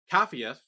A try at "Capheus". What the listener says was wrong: Capheus. With an S. With an S. Capheus. Capheus. With an S at the end. Capheus.